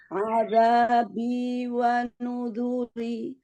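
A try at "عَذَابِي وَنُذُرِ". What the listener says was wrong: Iya, jangan nudu, tapi nuzu. Ketika dhamma itu tetap dijaga istifalnya. Wa nuzuri.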